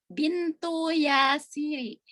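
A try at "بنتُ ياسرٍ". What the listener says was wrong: Tanwinnya dibaca. Yasirin.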